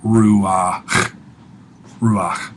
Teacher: the furtive patak there beneath the chet means it's pronounced before the chet.